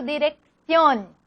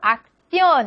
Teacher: El grupo CC se aproxima a la primera como K y la segunda como C